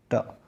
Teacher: वह मूर्धन्य भी है और अल्प प्राण और अघोष